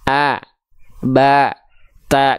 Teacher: karakternya tipis ya oke misalnya kita baca a ba ta kenapa huruf ba ketika berharakat fathah enggak dibaca bo tapi ba terdengarnya vokal a karena huruf ba termasuk ke dalam huruf yang tipis